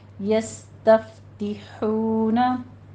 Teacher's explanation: यस्तफ्ते नहीं कहना, यस्तफ्तिहूना हा वस्ते हलक से बारीक आवाज़ के साथ वाव मद्दा अदा कीजिए